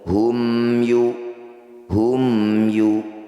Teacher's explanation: Mim sukunnya baca dengan jelas, rapatkan bibir, tidak usah dengung. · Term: izhar syafawi